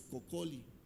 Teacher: Entonces las dos L se pronuncian como una sola.